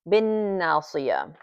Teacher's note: noon mushaddada bi ghunna tu haraka, meaning that we hold it for 2 beats